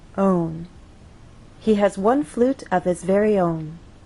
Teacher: So the overall pattern stays the same till the end, and on that final content word, our voice will glide down. Own. He has one flute of his very own.